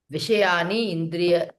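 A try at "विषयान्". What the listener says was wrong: Vishayan. Ah, no Sandhi there.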